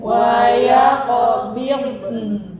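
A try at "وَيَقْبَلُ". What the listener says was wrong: Nah, masih ada pidun. Ujung lidahnya jangan turunin, ujung lidah. Kalau diturunin mesti. Ya, walaupun lembut misalnya bil. Oh, jangan diturunin. Ya, waya qabil.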